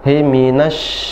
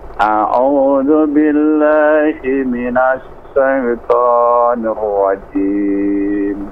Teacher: shin nafasnya dialirkan dan menyebar. Minash, kayak kita ngusir ayam.